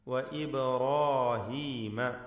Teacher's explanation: ബാഇൻ്റെ സുക്കൂൻ ഖൽഖല നൽകി ശബ്ദം ചലിപ്പിക്കണം. റാ അലിഫ് രണ്ടും തഫ്ഖീം ചെയ്യണം.